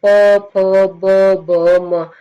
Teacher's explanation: जो आपके ओष्ठ है वो आपस में टकरा रहे हैं, तो इससे क्या हो जाएगा, इसका उच्चारण हो जाएगा आपका ओष्ठ, इसलिए इनको ओष्ठ्य वर्ण कहा जाता है।